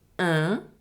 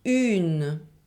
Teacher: One is a nasal sound and we do not pronounce the N, un, and the other one is an oral sound plus N, une.